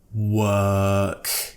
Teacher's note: with this word work we don't pronounce the letter R okay so it's just a WA but the difficulty is the